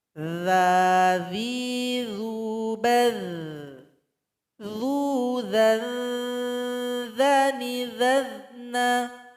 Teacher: Sifatnya itu, ketika kita membaca maka suara kita mengalir begitu saja. Dan dia tidak ada angin atau tidak ada nafas yang keluar ketika membacanya. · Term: huruf dha